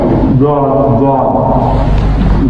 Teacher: With the a proper broader touch of the of the tongue with the palate. A broader portion of the tongue comes into touch with the palate. · But for dad we say broader contact of the tongue with the part of the ridge and part of the palate